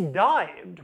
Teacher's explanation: with denasalization at the beginning, and stopping at the end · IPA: [dajbd]